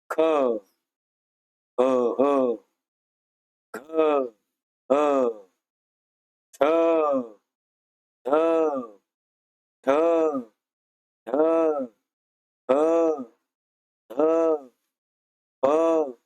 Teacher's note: जेव्हा हा उच्चार जेव्हा करतो आपण ह, तेव्हा काय होतं, फुफ्फुसातील हवा तोंडावाटे जोरात बाहेर फेकली जाते. काही वर्ण असे आहेत का ज्यांचा उच्चार करताना ह वर्णाचा उच्चार, तिथं ह ची छटा दिसते. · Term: महाप्राण